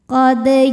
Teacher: Sebab ada huruf qalqalah yaitu dal yang sukunnya ini sukun asli dan ada di tengah bacaan kita. Maka kita bunyikan memantul dengan pantulan yang kecil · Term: qalqalah sughra